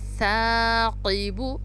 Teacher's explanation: سا کو بھی زبان کی نوک سے ادا کیا جاتا ہے. ہماری زبان کی جو نوک ہے وہ آگے والے دانتوں کے ساتھ ٹچ ہوگی